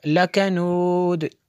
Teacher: دال پہ قلقلہ ہوگا